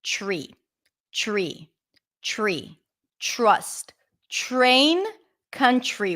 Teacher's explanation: the R so instead of pronouncing it up here TTT you pull the tongue in a little bit and you pronounce it further back